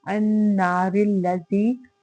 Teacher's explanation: زی میں دیکھیں یائے مدہ ہے 2 حرکت لمبا ہوگا